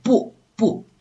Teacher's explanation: The tone sandhi, we have two in the beginning level, which is 不 and 一. So 不 literally pronounce the falling tone.